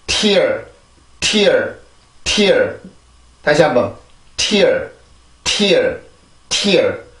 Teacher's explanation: 우리나라 말의 tear보다는 영어의 tear 이라고 하는 소리가 훨씬 더 강한데 이유는 여기 앞에서 나오는 공기가 강해지기 때문에 그렇습니다. 그래서 우리가 영어 단어를 들을 때 우리나라보다 소리가 세다라는 느낌이 들어요.